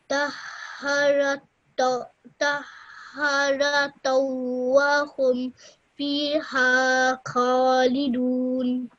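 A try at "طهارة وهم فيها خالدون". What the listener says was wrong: Well done. That was really, really good, mashallah.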